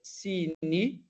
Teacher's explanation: uma vogal longa, seguido de uma consoante que não é alongada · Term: acento do tipo longo